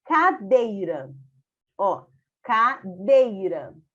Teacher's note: com a letra com som bem forte que é o e uma semivogal ou seja uma vogal com um som mais fraco que é o i